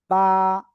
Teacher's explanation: দুই ঠোট দুই ঠোটের ভিজা অংশ থেকে অক্ষরটা উচ্চারিত হবে।